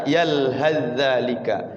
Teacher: Yalhas zalika masuk kepada zal. Sa-nya hilang masuk kepada za.